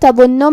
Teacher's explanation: کلمت تظن میں یہاں حرف الضا کو ہمیں تفخیم سے مطلب بھاری آواز میں پڑھنا ہے، پھر یہاں نون پہ تشدید ہے، لہذا دو حرف کے برابر ہم حرف النون کو پڑھیں گے